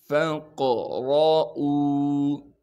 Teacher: قاف کو موٹا کر کے پڑھیں گے اس لیے کہ قاف موٹے حروف میں سے ہے، اور قاف پر قلقلہ کریں گے یعنی آواز کو ہلائیں گے۔